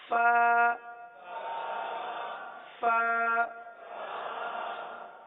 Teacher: یہ اوپر کے دانت اور نیچے کے ہونٹوں کا جو تر حصہ ہوتا ہے وہاں سے ادا ہوتا ہے